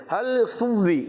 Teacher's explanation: बाज़ बच्चे पढ़ते हल सुव्वी, यानी ऊपर के दांत नीचे होंठ से लगा कर वाव की अदायगी करते हैं, और खुसूसन तशदीद वाला वाव, तो पढ़ते हल सुव्वीबल।